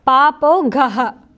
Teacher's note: the two dots are visarga, and you say aha with it